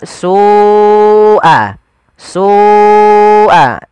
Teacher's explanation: Kemudian melafal su'al azab, Ada lafal su, ada mad wajib muttasil, yaitu lafal su wajib kita panjangkan sepanjang 4 atau 5 harokat